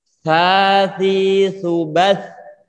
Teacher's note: Di ujung lidah ditempelkan ke ujung gigi seri bagian atas. Keluarkan sedikit juga. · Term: huruf sa